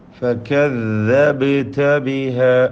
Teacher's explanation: ബഇൻ്റെ സുക്കൂൻ ഖൽഖല നൽകി ശബ്ദം ചലിപ്പിക്കണം